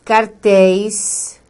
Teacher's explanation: cartéis tem aí um ditongo de som aberto na última sílaba